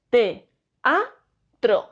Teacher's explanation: palabra teatro en sílabas no digo teatro digo te a otro a pesar de que estas vocales están juntas se pronuncian en sílabas diferentes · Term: hiato